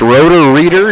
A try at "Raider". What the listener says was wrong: it's Raider yeah Raider not reader or rotor Raider